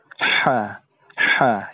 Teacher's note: huruf yang keluar dari tenggorokan disertai dengan udara yang terdengar sangat tipis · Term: huruf H